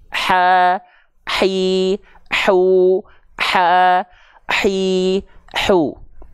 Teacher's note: Pastikan nafas yang mengalir dari H kecil adalah nafas yang berbisik.